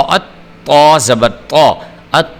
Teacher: یہ دیکھیں الف زبر تو ات، تو زبر تو ات، تو ایک تو کا قلقلہ کرنا ہے اور اس کے علاوہ آپ نے تو کو موٹا بھی کرنا ہوتا ہے